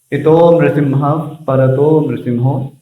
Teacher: फिर जैसे यहाँ विसर्ग का जो नियम है उसको ध्यान रखिए। यदि प के पहले विसर्ग है, हल्का सा फ उसमें आना चाहिए। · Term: उपधमानी